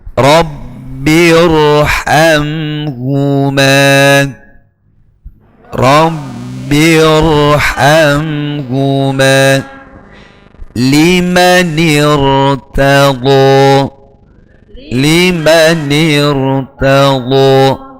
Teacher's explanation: Jadi ra-nya itu dibaca tafkhim meskipun didahului harakat kasrah karena sebelumnya merupakan hamzah wasal.